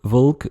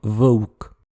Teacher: les jeunes générations le prononcent généralement WE et donc VOLK devient VOUK